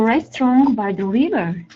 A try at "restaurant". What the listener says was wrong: Restaurant? T is not pronounced.